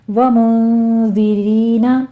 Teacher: نون ساکن کا قاعدہ اخفا کی ہے، آگے دال کو نرمی سے پڑھنا ہے، سیٹی کی آواز نہیں آنی چاہیے